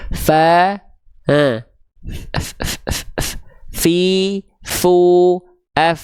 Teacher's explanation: ujung gigi seri atas kita kita sentuhkan dengan bibir bawah bagian dalam kita perut bibir bawah tuh bagian bibir bawah bagian dalam yang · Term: huruf Fa